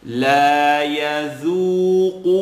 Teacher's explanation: Qaf is heavy and has an u. So I should be able to hear the light dhu and the heavy qu.